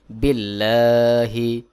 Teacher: আল্লাহ শব্দের আগে জের রয়েছে এটাকে বারিক বা পাতলা করে পড়তে হবে